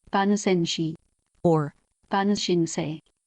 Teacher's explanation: Note that in this expression, the surname does not change tone.